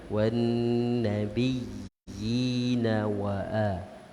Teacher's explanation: Ya baris bawah tu panjangkan dua harakat.